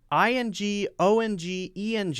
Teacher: you're pulling the back of the tongue up the back of your tongue is going up against the back of the roof of your mouth and still blocking all the air so that it comes out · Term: ing ong eng sound